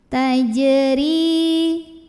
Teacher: Kemudian ra-nya dibaca secara tarqiq karena barisnya kasrah, maka bacanya tipis, lidah belakang datar